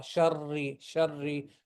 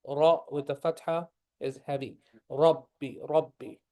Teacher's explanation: The ra with the kasra is going to be the soft ra. Sharri, sharri, not the heavy sharri.